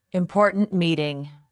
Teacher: Say important meeting with a sharp t at the end of important.